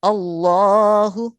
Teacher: اس میں جلالت اللہ کا لام موٹا پڑھا جائے گا کیونکہ الف سے پہلے لام سے پہلے والے حرف کے اوپر زبر ہے، اللہ۔